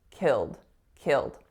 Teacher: The first syllable is killed, killed. So the vowel there is a lax I. it goes into a dark L, it goes into a D.